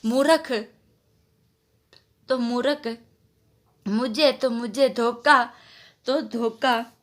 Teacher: महाप्राण ध्वनियों का अल्प प्राणीकरण काफी ध्वनियों में दिखाई देता है